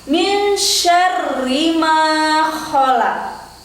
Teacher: Min syarri ma dibaca panjang 2 harokat karena ada tanda alif setelah fathah. Kho dari dalam, lak kembali dipantulkan, hukum bacaan qalqalah.